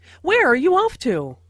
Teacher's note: Notice the falling intonation since this is an information question, not a <yes/no> question.